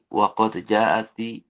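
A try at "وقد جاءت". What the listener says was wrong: jaat itu jaa jaa kemudian kena ditambah ta mati ya tasukun ya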